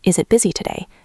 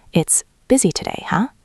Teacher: With a falling relaxed tone.